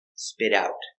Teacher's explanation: The T is pronounced like a fast D.